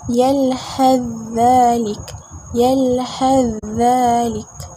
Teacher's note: idgham kamil yang kedua, sa diidghamkan kepada zal